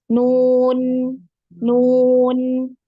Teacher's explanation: ketika kita mengucapkan huruf nun ini ada getaran di hidung ya, ada dengungnya ya, ada gunnah. Nah, ini ada bantuan ya, bantuan makhraj dari khoisyum atau rongga hidung ya.